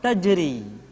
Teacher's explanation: Yang berikutnya adalah huruf ra yang dibaca tipis. Ra dibaca tipis ketika dia berharakat kasrah